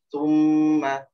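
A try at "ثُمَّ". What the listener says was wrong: Ya, domanya sempurnain dulu. U-nya, u. Nah, gitu. Ya, jadi doma itu monyong, jadi mesti dimonyongkan.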